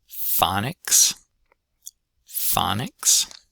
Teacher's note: stress on the first syllable and ah vowel there. And then again, for the second syllable, I'd expect most of y'all to transcribe it with an an ih.